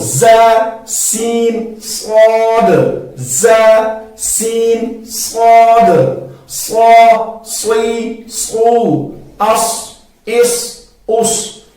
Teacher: زا اور سین کو ہم نے باریک پڑھنا ہے اور صاد کو ہم نے موٹا پڑھنا ہے